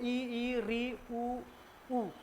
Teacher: जिनके उच्चारण में हमारा मुंह जो है सबसे कम खुलता है